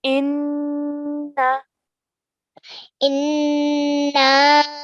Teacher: The noon has a shadda on it, which means that we have to make a nasal sound. So we're going to say inna. · we are going to elongate for at least 3 counts for the mad as-saghir.